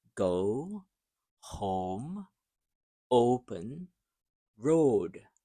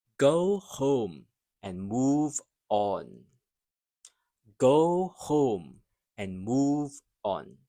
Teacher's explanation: The long O. This is the gliding O It starts in the middle and moves forward. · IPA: /əʊ/